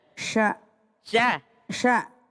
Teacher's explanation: Kalau sya itu tidak maju bibir